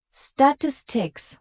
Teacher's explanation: statistics with primary stress on the second syllable, but without making it sound forced